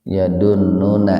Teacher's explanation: Ladzi madbi'iyya yadunnu guna, nun bertasdid itu guna. Guna itu mendengung. Ditahan dua ketukan biar terdengar mendengung.